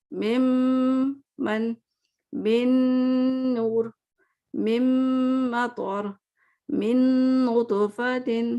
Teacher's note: سب میں آپ کو ایک ناک سے آواز آ رہی ہے، یعنی غنے کی آواز آ رہی ہے، اور دوسرا یہ 2 حرکت تک کھینچنا ہے.